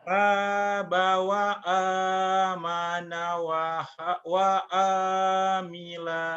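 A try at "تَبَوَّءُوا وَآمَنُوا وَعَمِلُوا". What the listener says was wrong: Pendek. Pendek. Yang panjang cuma dua. Pendek.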